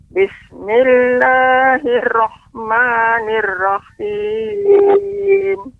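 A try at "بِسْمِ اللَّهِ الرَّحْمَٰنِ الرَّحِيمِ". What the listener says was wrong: Masih ra ya bertasydid. Dengarkan Nek. Bismillahirrahmanirrahim. Getarannya lebih sedikit kan?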